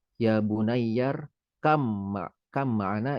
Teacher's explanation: Baik Ustadz, ya ini matobi'i, kemudian ya bunayyar kam ma'ana, ini ada ba nun ba mati atau nun namanya sukun bertemu dengan mim, tapi tidak dibaca baknya, melainkan langsung dimasukkan ke huruf mimnya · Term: idgham